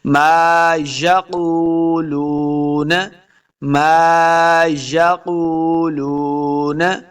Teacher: یہ دونوں واو مدہ ہیں, اس کو دو دو حرکات لمع کر کے پڑھنا ہے, نون کو لمع نہیں کریں گے.